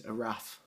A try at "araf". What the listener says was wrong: Because we say F with the V, so Arav, Arav.